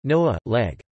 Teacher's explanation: has changed the Common Slavic g into an h sound